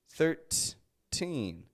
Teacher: when we're talking the numbers 13 until the number 19 these have a true true T sound